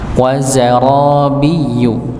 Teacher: Harusnya dia di ujung lidah bertemu dengan gusi bawah, dia malah menggunakan tengah lidah.